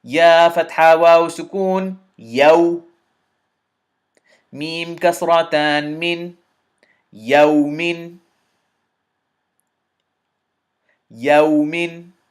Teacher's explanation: So the ya fatha ya is done with a little bit of a smile, and then immediately waw sukoon is ya oo. You have to pout your lips to do the oo. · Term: huroof-ul-leen